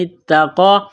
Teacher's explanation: تا کو دبائیں گے، تشدید کی وجہ سے سختی کریں گے، قاف کے اوپر کڑا زبر ہے، ایک الف کے لمٹ میں کھینچنا ہے، قاف کو موٹا کرنا ہے · اس تا کو دبائیں گے، تشدید کی وجہ سے سختی کریں گے